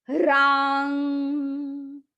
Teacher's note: रांग है वो दीर्घ है आ है अ नहीं है तो जब हम आ बोलते हैं तो थोड़ा उसका उच्चारण लंबा हो जाता है